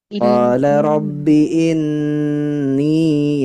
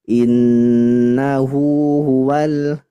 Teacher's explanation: Yang kedua ya di nun musyaddadah. Di gunnahnya agak didengung lama.